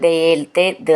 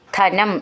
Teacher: ദ എന്നുള്ളത് ദയയിൽ ദ എന്നാണ് മൃദുവായിട്ട് പറഞ്ഞാൽ മതി ധ എന്നുള്ളത് ധനം എന്നൊക്കെ ഉള്ളതിൽ ധ എന്ന് നന്നായിട്ട് ഊന്നി പറയണം